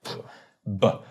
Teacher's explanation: a bilabial meaning 2 lips, stop would be like P or B, because you stop the air. B. Bilabial stop.